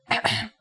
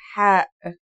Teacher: It sounds like the sound you make when trying to cool your mouth and throat after eating something very spicy. The closest English counterpart to the sound is H. The only difference is that it comes from a point deeper down in your throat